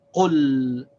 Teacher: the sakin means that we stop on the sound of the letter, so we stop on the sound of the lam. It's q plus l, so we say qul.